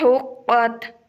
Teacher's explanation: قاف کو گلے سے نکالنا ہے، پر کر کے